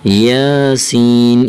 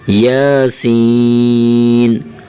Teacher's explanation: یا کو ہلکا سا کھینچیں گے، یا کے اوپر صرف کھڑی زبر ہے. سین کو کھینچنا ہے کیونکہ سین کے اوپر مد آ رہی ہے. یاسین، اگر زیادہ کھینچیں گے نا یاسین تو لوگ سمجھیں گے یار اس بندے کو پڑھنا نہیں آ رہا ہے، یہ شاید اس بندے نے سمجھا نہیں ہے.